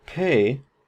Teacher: the P in pay, is aspirated. It has this little H up here that we transcribe it with because we have a puff of air